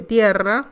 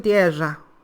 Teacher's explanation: Ahora, en algunas regiones del noroeste argentino dicen tierra, es decir, usan una palatal sonora para indicar esa vibrante doble